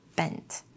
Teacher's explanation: When you say bent, your two lips come together at the beginning